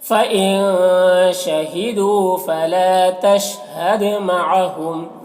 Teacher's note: فإن کا نون میں اخفا ہوگا، نون کی آواز کو ناک میں چھپا کر پڑھیں گے۔ شہیدو، یہاں پر واو مدہ ہے، ایک الف کے برابر کھینچیں گے۔